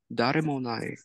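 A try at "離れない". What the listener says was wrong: Close. It's ha. Hanare nai. So hanareru is to separate.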